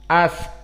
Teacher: Sin hams maka dikeluarkan nafas